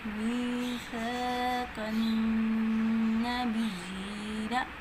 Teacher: قاف کی آواز کو موٹا پڑھیں گے۔ نون مشدد کا غنہ ہے، ناک میں آواز لے کے جائیں گے